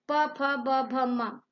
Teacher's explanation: दोनों होठों की सहायता से इन शब्दों का उच्चारण होता है या ध्वनि निकलती है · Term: प वर्ग